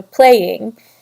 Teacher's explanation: Trochee is also 2 syllables, and it follows a stressed, unstressed pattern